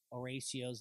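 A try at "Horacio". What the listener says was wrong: Remember, we don't pronounce the H.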